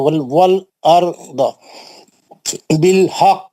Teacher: یہاں پہ قلقلہ قربہ ہوگا, اسٹرانگلی پڑھیں گے کیونکہ مشدد ہے